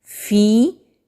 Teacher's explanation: या साकिन से पहले ज़ेर है तो याय मद्दा है, एक अलिफ के बराबर खींच कर पढ़ेंगे।